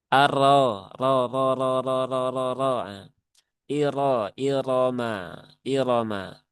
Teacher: Berarti rnya itu dibaca dengan tafkhim ya, dengan tebal.